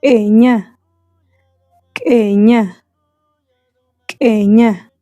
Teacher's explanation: Se articula en la garganta mediante una contracción rápida de la glotis, lo que produce un corte breve de la voz. Este corte interrumpe o modifica el sonido de la vocal o consonante que acompaña, dándole un carácter sordo o entrecortado. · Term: El saltillo